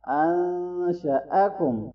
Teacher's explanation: حمزہ کے اوپر زبر ہے، فتحہ ہے تو اس کو شارٹ پڑھنا ہے، لمبا نہیں کرنا